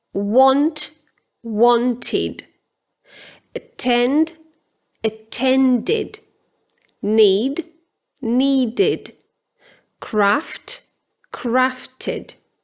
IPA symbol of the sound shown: ɪd